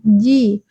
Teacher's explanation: Tengah lidah menyentuh langit-langit.